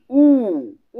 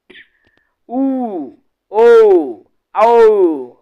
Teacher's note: ऊ बोलोगे तो पूरा हमर होठ एकदम गोलवा हो जाते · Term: वृत्तमुखी